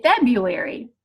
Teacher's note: The first R has been dropped because it's a lot of work for our mouths to say February. And we're left just using the second R. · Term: R dissimilation